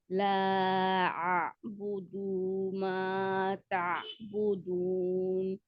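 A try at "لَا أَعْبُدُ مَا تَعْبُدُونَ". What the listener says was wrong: अभी आपकी कल वाली गलती अभी बाकी है, दाल को आप लंबा करते हैं अभी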